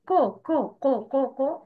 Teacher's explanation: أقولها مثلا من غير إتمام صوت الحركة، قاف ضماقه أقولها كو كو كو كو كو.